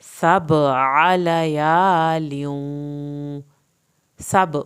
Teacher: عین کو حلق سے پڑھا ہے لیکن زبر کو لمبا نہیں کیا۔